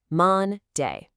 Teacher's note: The first syllable is louder and slower. · It has two syllables. We don't say Monday evenly like a robot. We stress the first syllable. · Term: syllable stress